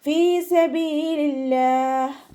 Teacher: ഹ എന്നുള്ള അക്ഷരത്തിൻ്റെ സൗണ്ടിനെ തൊണ്ടയുടെ അവസാന ഭാഗത്ത് തന്നെ കൊണ്ടുവരാൻ ശ്രദ്ധിക്കുക കേട്ടോ. ഹംസയുടെ സൗണ്ടായി പോവാതെ നോക്കുക.